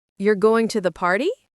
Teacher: if you say you're going to the party with your voice rising at the end, it's a question. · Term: intonation